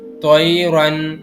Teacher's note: توئی رن میں ہم نے تو کو نہیں کھینچنا، اس کی وجہ کیا ہے؟ کیونکہ اس میں یا لین استعمال ہو رہا ہے